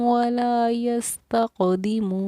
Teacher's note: واو حروف مدہ ہے، ایک الف کی مقدار کے برابر ہم نے اس کو کھینچا ہے